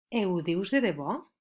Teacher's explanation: El pronom feble o sona eu quan va davant d'un verb que comença per consonant.